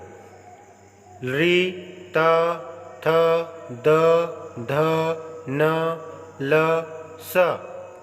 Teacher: दंत री, त, थ, द, ध, न, ल, स का उच्चारण स्थान दंत है। इन वर्णों के उच्चारण में जिह्वा दांत को स्पर्श करती है और दांत की सहायता से बोले जाने के कारण इन वर्णों को दंत्य कहा जाता है।